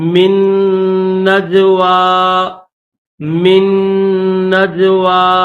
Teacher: نون ہے اس کو چھوڑ دیں گے، دوسرا نون پڑھیں گے، میم کو اس نون کے ساتھ ملائیں گے، نون کو پھر جیم کے ساتھ ملائیں گے